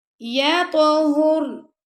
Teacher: یا تو کو موٹا بھی پڑھنا ہے اور اس پہ کلکلا بھی کرنا ہم نے